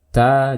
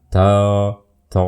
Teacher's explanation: Perbedaan yang berikutnya dengan to, kalau to isti'la dibaca tebal, ta istifal dibaca tipis. Ta jangan to.